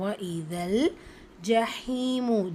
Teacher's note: பண்ணி அதாவது சேர்த்து ஓதுறோம் வைதல் ஜஹீமு ஜீம் பத்ஹா ஜா ஹால இருக்கிறது யா மத்தா இரண்டு ஹரக்கத் அளவு நீட்டம் கொடுத்து ஓதணும்